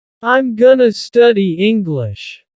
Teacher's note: That word to simply becomes a.